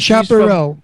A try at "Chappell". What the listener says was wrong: No, it's not Chaparral. But there's no R. There's no R in her last name. Chappell. Chappell.